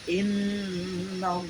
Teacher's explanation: Ada 2, yaitu gunnah dan tahkim. Gunnah di sini karena ada huruf nun tasdid, membacanya harus didengungkan kira-kira 2-3 harokat.